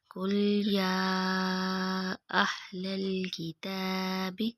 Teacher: یا کے اوپر کھڑی زبر بھی ہے اور مد بھی ہے، اسے 3 سے 4 فنگر کے برابر لمبا کریں گے